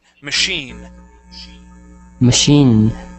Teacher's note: This word here is machine with the stress at the end of the word.